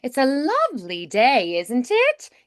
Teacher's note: The pitch tends to rise and fall, more than we have in general American speech. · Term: melodic sing-songy quality